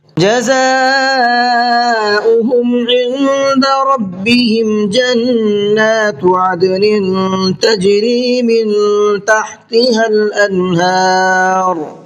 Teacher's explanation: عند یہاں نون کے اندر اخفا کریں گے، اس لیے کہ نون ساکن کے بعد میں دال ہے اور دال بھی اخفا کے حرفوں میں سے ہے، تو نون کے اندر اخفا کریں گے.